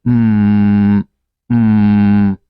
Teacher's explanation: It's a nasal sound because the sound must come from your nostril. Let me close my nose to show you the sound won't come out.